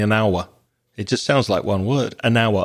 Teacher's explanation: in connected speech, we'd probably join those two words together and say an hour.